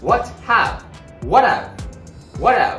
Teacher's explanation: T▁のシーンと▁H▁の発音がなくなって▁A▁の母音、これが合わさって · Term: リンキング